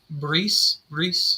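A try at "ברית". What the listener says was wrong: Bris is the Yiddish way of saying Brit. Brit. Brit. The in Yiddish, the taf with no dagesh is read as an S.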